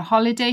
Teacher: stress on the Hall holiday